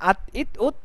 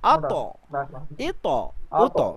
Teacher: তা টা নরমাল হচ্ছে আত ইত উত আর ত টা একটু মোটা হচ্ছে একটু ধাক্কা হচ্ছে